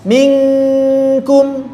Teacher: kafnya sudah menyentuh makhraj dan suara kafnya tipis, sehingga yang paling tepat menurut kami, menurut hasil periwayatan kami adalah yang kedua untuk minkum. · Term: ikhfa